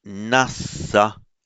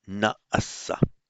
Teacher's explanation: you do have a long vowel retained before a doubled consonant